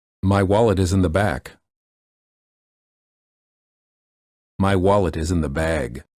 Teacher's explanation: the first sentence has a word with the voiceless consonant and the second sentence has a word with a voiced consonant